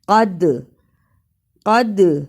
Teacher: دال جزم کی صورت میں حرف قلقلہ ہے، یعنی اس حرف کو ہلا کر پڑھنا ہے